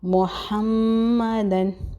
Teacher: میم مشدد، غنہ ہوگا ایک الف کے برابر